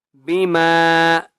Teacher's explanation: میم کو ایک الف کی مقدار کھینچ کر پڑھیں گے